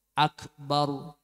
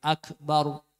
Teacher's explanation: ro dibaca tafkhim jadi dengan cara sedikit memancungkan bibir